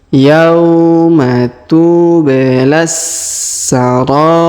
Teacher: Yauma tubelas ya, tu huruf ba berharokat sukun maka kita pantulkan. Tubelas, huruf la langsung sambung ke huruf sa yang berharokat tasdid ya. Kita tahan dan kita tekan.